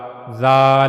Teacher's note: जबान की नोक का ऊपर वाला हिस्सा ऊपर के अगले दो दांतों के किनारों से जाकर जब मिलेगा तो वहां से जाल अदा होगा। जाल और हमने यह भी पढ़ा कि जाल को अदा करते हुए आवाज में नरमी होनी चाहिए।